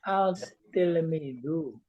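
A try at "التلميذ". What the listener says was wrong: Jadi dibacanya ad. Ad. Jadi dibacanya ad. Tak itu huruf syamsiah, jadi ada di dalam. Kayak tasdid saja. Di mubtada itu seperti al-tilmidu enggak.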